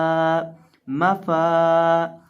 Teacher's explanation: मीम है इसको तो हम सिंपल दोनों होंठों को मिलाने से पढ़ेंगे